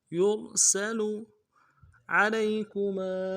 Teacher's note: لام کو یا کے سامنے لانا ہے، یا لین ہے بغیر کھینچے پڑیں گے